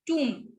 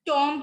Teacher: टूम, ठीक है, टॉम्ब नहीं होता ये, टूम होता है ये. और म पे हम अपनी प्रोनाउंसिएशन जो है वो एंड करेंगे, ब नहीं बोलेंगे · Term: B is silent